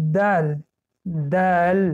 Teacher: مخرج حرف دل این سری زبان با پیش کام میرسد.